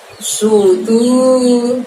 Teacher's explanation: tu-nya panjangnya 2 karena ada waw sukun di situ